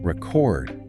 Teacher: if you stress the second syllable record, it's the verb meaning to capture sound or information.